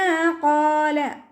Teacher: ഖാഫ് ഇസ്തിഅലാൻ്റെ ലെറ്ററാണ്, തഫ്ഹീം ചെയ്തിട്ട് ഉച്ചരിക്കുക. അലിഫ് മദ്ദും കൂടെ വന്നിട്ടുണ്ട്, 2 കൗണ്ട് നീട്ടിക്കൊടുക്കുക.